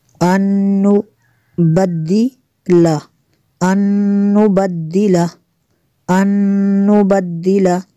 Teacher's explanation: نون ساکن کے بعد نون ہے تو یہاں پہ ادغام ہوگا، اس لیے یہاں پہ غنہ کریں گے۔